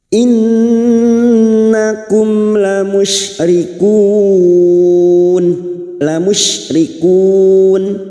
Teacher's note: Mu hum mim sukun bertemu hamzah idhar safawi. Mim sukun dibaca jelas tanpa mendengung.